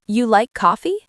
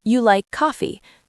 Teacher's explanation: in a question, your voice goes up at the end. "You like coffee?" And in a normal sentence, it goes down.